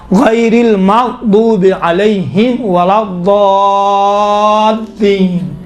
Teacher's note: دیکھیے خود لام ہے نا، لام یقیناً حروف لین میں سے باریک پڑھا جاتا ہے، کاملاً باریک ہے، لیکن یہاں پر لام چونکہ لام کے اوپر تشدید ہے، تشدید کی وجہ سے لام کا تلفظ تھوڑا سا موٹا اور ضخیم اور غلیظ طریقے سے کیا گیا ہے